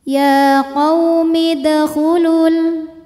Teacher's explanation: Sebab ada pertemuan 2 huruf sukun, yaitu huruf mad waw dan huruf lam sukun. Sukun ketemu sukun tidak bisa dibaca sehingga sukun pertama dilepaskan. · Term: takhallus bil hadfi